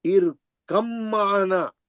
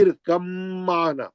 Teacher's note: با پڑھیں گے نہیں آپ، ارکم معنا غننے سے پڑھیں گے میم، با کو چھوڑ دیں گے